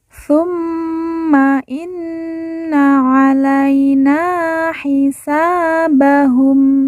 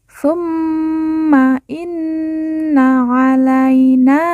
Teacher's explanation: mim yang bertasydid dan nun yang bertasydid langsung kita tekan, kita tahan 2 harokat dan didengungkan